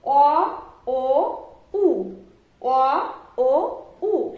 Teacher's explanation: এই স্বরধ্বনিগুলো লক্ষ্য করো, অ, ও, উ, অ, ও, উ। এই 3টি স্বরধ্বনি যখন তুমি মুখ দিয়ে উচ্চারণ করবে তখন দেখো জিহ্বাটা পেছন দিকে পিছিয়ে যাচ্ছে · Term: পশ্চাৎগত স্বরধ্বনি